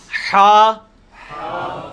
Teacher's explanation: یہ وسط حلق سے یعنی حلق کے درمیان سے نکلتا ہے. یہ کبھی آپ وہ گلے والی ٹافی کھائیں نا، وہ والی آواز ایکزیکٹ بالکل کلیئر وہاں سے جو نکلتی ہے نا، یہ ہا کا مخرج وہی ہے.